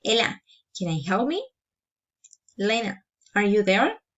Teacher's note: direct address rising intonation